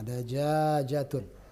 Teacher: jimnya agak panjang yang pertama